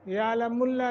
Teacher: قد قاف کو موٹا دال پہ قلقلہ کرنا ہے یعلم اللہ لفظ اللہ کو تفخیم کر کے منہ بھر کے پڑھیں گے